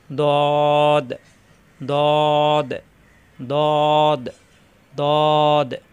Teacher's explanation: জিহ্বার গোড়ার কিনারা উপরের মাড়ি দাঁতের গোড়ায় লাগিয়ে অথবা উভয় পাশে লাগিয়ে